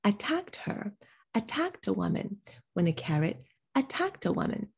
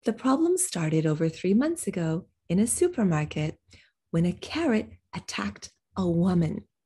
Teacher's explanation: woman is a noun and we normally stress nouns, but this noun, a woman, is such a generic word for a person that we probably would not emphasize it. We would treat it almost the way we do a pronoun.